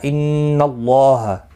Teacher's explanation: اللہ کے لام کے اوپر کھڑی زبر بھی ہے، ایک الف کی مقدار کے برابر کھینچ کر پڑھیں گے، ہا کو کھینچنا نہیں